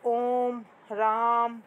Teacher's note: इसमें 3 मात्राओं का समय लगता है, इसलिए इन्हें प्लुत स्वर कहते हैं।